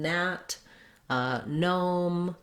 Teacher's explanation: So when you have GN at the start of the word, it's going to say the N sound.